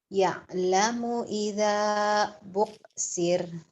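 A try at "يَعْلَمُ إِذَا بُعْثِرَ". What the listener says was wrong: Buksir. Pendek. Terus emang kamu orang Jawa gitu kan. Buksir. Ainnya ke K. Kayak Rasim sama Kasim aja buksir. Ya, tuh ain mati itu umumnya orang-orang Jawa tuh, tapi yang pinter mah orang Jawa juga banyak, Masya Allah ya.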